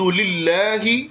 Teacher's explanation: للہ لفظ اللہ کو باریک پڑھیں گے کہ اس سے پہلے زیر آ گئی